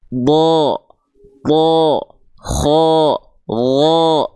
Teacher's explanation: karena apa Karena dia termasuk ke dalam huruf yang tebal ya jadi huruf-huruf tebal itu ketika berharakat fathah dia akan terdengar seperti vokal O karena dia tebal